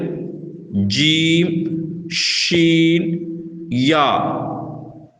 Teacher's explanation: ஜீம், ஷீன், யா, இந்த 3 எழுத்துக்களும் நாவின் நடு நேரே உள்ள மேல் முரசில் படும்போது வெளியாக வேண்டும்.